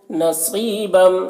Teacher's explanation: صاد کو پر پڑھیں گے، صاد حروف مستعلیہ میں سے ہے